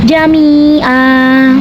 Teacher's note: Maka huruf mim panjangnya dua harakat